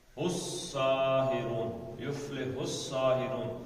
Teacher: جاءکم سحر ھذا ولا 2 یفلح الساحرون، اس سہا سے الساحرون، یفلح الساحرون، الف لام نہیں پڑھا گیا، کیوں نہیں پڑھا گیا جی؟ کیونکہ سین جو ہے یہ حروف شمسی میں سے، یہ میں آپ کو بتا چکا ہوں، شمسی حروف جو ہوتے ہیں جب یہ لکھے جاتے ہیں تو یہ لام جو ہے نا یہ تعریف کا، یہ نہیں پڑھا جاتا۔